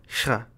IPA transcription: ɧ